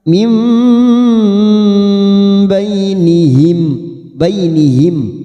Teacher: nun sukun bertemu ba namanya bacaan iqlab yaitu membalik atau menukar seperti bertemu mim